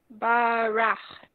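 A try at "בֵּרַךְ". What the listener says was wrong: Nice. Except, what's the first vowel under the bet?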